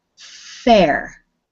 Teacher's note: Notice that you don't get any buzzing in your throat until you say the R at the end.